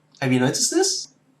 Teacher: every time we conclude a sentence, our pitch always goes up at the end, rather than going down like everybody else.